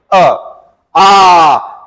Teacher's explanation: जब हमने आ का उच्चारण किया तो हमारा मुंह क्या होगा? पूरा का पूरा खुल गया। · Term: विवृत